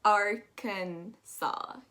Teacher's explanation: The S at the end is silent, unlike Kansas. And then you're also going to pronounce that A after the K much flowier.